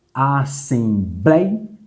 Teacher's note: Ou seja, a penúltima sílaba é a mais forte. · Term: paroxítona